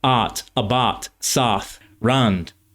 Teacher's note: the diphthong in words like out, about, south, and round is a monophthong